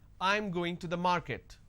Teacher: this is a statement and it's a flat intonation